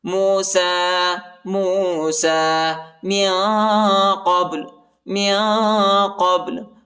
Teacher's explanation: با کو جھٹکے کے ساتھ پڑھیں گے، قلقلہ کریں گے